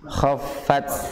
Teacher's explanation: Berat kha karena dia memiliki sifat isti'la.